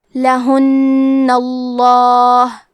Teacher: کلمت لہن میں حرف نون پہ تشدید ہے، تو ہم 2 حرف کے برابر نون کو پڑھیں گے، اور کیونکہ تشدید زبر کا ہے تو لفظ الجلالہ کے لام کا حکم ہے تفخیم، تو ہم حرف اللام کو موٹی آواز میں پڑھیں گے